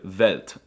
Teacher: For some reason, they pronounce the W's with a V sound